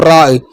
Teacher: നാവിൻ്റെ തലയുടെ മുതുകും മേലെ മുമ്പല്ലിന്റെ ഊനും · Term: റായിന്റെ മഖറജ്